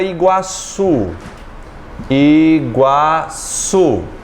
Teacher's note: Portanto, eu tenho duas vogais numa mesma sílaba. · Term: Ditongo